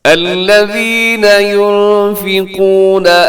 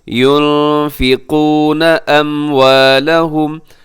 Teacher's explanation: نون ساکن ہے، نون ساکن کے بعد فا ہے، یہاں آپ اخفا کریں گے